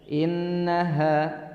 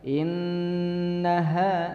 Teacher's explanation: Karena memang ditekankan untuk gunnahnya, maka disebut tajibul gunnah ya, wajib didengung.